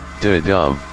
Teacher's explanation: A soft beat, followed by a stronger, stressed beat. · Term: iamb